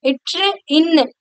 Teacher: மேல்வாய நாக்குடைய நுனி மிகவும் பொருந்துவதால் பிறக்கின்றது